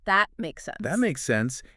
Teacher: In American English especially, we often stop that final T. We don't say that T makes sense with a big explosion of air. We say that makes sense.